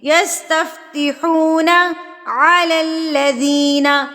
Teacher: یستفتحون، یہاں پر دیکھیے یہاں پر حروف مدہ واو پھر سے اپلائی ہو رہا ہے، یہ حروف مدہ واو یہاں پر آ گیا ہے، واو ساکن سے پہلے پیش ہے تو اس کو ہم ایک حرکت کے برابر کھینچیں گے